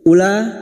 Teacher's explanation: Ulaika alladzina hadallahu fabihudahu muqtadih. Ula bertemunya mad dengan hamzah dalam satu kalimat mad wajib mutasil, 5 harokat kita panjangkan